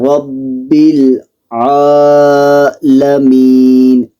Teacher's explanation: را کو پور پڑھنا ہے